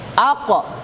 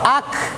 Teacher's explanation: Jadi sama-sama di aqsal lisan, cuma qaf ini di belakang, kafnya di depan.